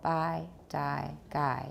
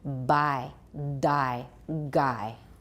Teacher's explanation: let's just practice by Dai and guy with no voicing and no aspiration